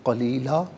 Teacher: وقف کی صورت میں قلیلا پڑھا جائے گا، اس لیے کہ دو زبر کی تنوین وقف میں الف سے چینج ہو جاتی ہے